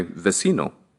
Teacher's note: the letter V is pronounced as the letter B but the lips are simply touched very mildly